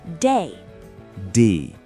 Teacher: It's pronounced like the English word day, but with a tiny eh sound at the end.